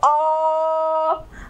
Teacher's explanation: आपकी जीवा कहीं टच नहीं कर रही, अ सीधे कंठ से आपकी आवाज आ रही है